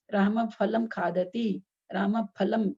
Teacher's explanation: बोलने में ऐसे लग रहा है ना जैसे फ के पहले कुछ प का उच्चारण आ रहा है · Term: उपधमानीय